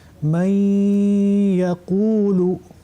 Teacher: on applique le ghunna d'une façon soutenue, cette intonation nasale soutenue. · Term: idram bil ghunna